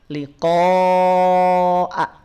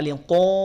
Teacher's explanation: bunyi hamzahnya bunyi vokal A, bukan bunyi vokal O